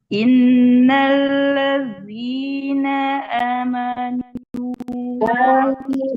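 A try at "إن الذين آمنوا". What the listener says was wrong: Panjangkan A-nya amanu.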